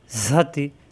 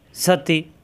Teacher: ঝা যাবর ঝা, তাজেরতি ঝাতি, ঝা জিহ্বা নিচের দাঁতে চাপ দিয়ে, তা জিহ্বা উপরের দাঁতের গোড়ায়। ঝাতি, হারকাতের উচ্চারণ তাড়াতাড়ি।